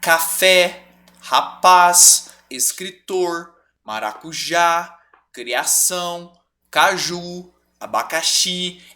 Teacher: oxítonas Elas têm a última sílaba tônica · café, qual é a sílaba tônica? É o fé, a última. Ou seja, ela é uma oxítona.